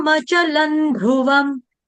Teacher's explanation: ल के ऊपर जो अनुस्वार है उसका उच्चारण अनुनासिक न हलंत न की तरह क्योंकि आगे ध शब्द आ रहा है